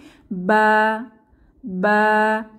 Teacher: বা হরফটি উচ্চারিত হবে ভেতরের দিক, অর্থাৎ দুই ঠোঁটের ভেজা জায়গা থেকে, ভেতরের পার্ট থেকে বা বা উচ্চারিত হবে।